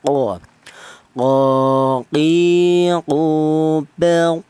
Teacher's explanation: Tapi kedua kedua-duanya ini baik huruf kaf dan huruf qf ini berada di pangkal lidah atau lidah bagian belakang